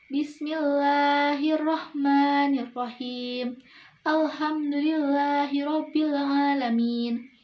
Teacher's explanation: lam jalalah takhfif, Artinya tipis, ciri-cirinya itu sebelum lam jalalahnya berharokat kasroh.